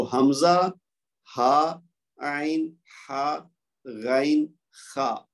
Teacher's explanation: کہ یہ 6 کے 6 حلق والے، یعنی یہ جو ہمارا گلا ہے نا، اس یہاں سے ادا ہوتے ہیں. 2 گلے کے جو سینے کی جانب آخری حصہ وہاں سے، 2 وسط حلق سے، اور 2 جو زبان کی طرف یعنی گلے کی طرف جو ہمارا حصہ ہے 2 وہاں سے ہے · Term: حروف حلقی